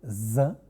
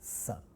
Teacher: It's also a fricative sound, and it's also alveolar fricative, but the distinction between z and s, both being fricative, is z is a voiced fricative, whereas s is a voiceless fricative. You have seen the distinction between voicing. · It refers to the vibration in the vocal cord. We have vibration in the vocal cord when we say z, and almost no vibration when we say s.